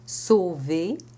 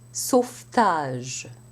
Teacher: sauver with a voiced V, but le sauvetage, where the T devoices the V into an F. Sauver, sauvetage.